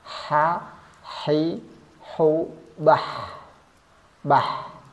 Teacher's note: dari segi nafas dia bersifat hams artinya nafasnya keluar ada nafas yang keluar Kemudian dari segi suara dia bersifat rakhawa tidak ada tekanan tekanannya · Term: H kecil